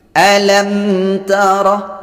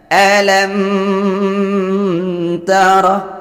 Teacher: Membacanya dibaca terang, bunyi mimnya dibaca terang dan tidak boleh mendengung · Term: izhar syafawi